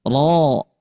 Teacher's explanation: ketika harakat fathah maka sifatnya tebal